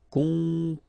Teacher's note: O and M together, after that a consonant, so it's the nasal on. Composer. Okay, you pronounce it Z here because you've got two vowels and only one S.